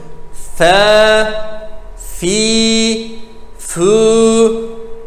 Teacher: F alt dudak üst dişlere temas ederek çıkartılır. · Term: F harfini